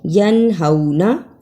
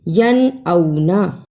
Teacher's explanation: یعنی ایک جگہ ہم نے ہاں کی آواز نکالنی ہے جبکہ دوسری جگہ ہم نے حمزہ کی آواز نکالنی ہے